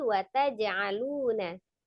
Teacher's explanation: qalqalahnya adalah qalqalah sugro ya, kecil saja, tidak dijedah, tidak ada hamzah sukun di belakangnya.